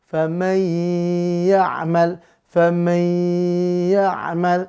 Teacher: Maka bigunnah masuk dengan dengung, lebur huruf nun sukun ke ya dengan dengung.